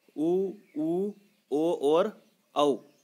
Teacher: ये चारों ही स्वर वृत्ताकार स्वर है जिन्हें हम वृत्ताकार कहते हैं।